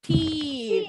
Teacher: Kalau giginya banyak, teeth. Bilangnya I-nya panjang. Sama-sama pakai voiceless TH sound.